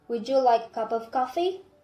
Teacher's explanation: it's rising intonation example would you like a cup of coffee my intonation is rising